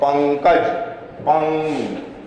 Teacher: अब वर्ण के ऊपर केवल एक बिंदी लगा देते हैं, जैसे पंकज, पंग, हवा केवल नाक से बाहर आ रही है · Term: अनुस्वार